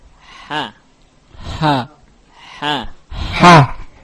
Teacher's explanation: Ha memiliki sifat-sifat di antaranya al-hams. Yakni mengalirkan nafas, ar-rakhawah, dan juga istifal. Istifal yakni tipis.